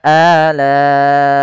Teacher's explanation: Kemudian lai, ada mad wajib muttasil, yaitu ditandai dengan adanya hamzah yang datang setelah bacaan mad tabi'i. Awalnya la 2 harokat, karena dia bertemu dengan hamzah menjadi 4 harokat. Maka dalam membaca la-nya, ini kita panjangkan sepanjang 4 harokat untuk bacaan mad wajib muttasil, disebabkan adanya hamzah yang datang setelah mad tabi'i.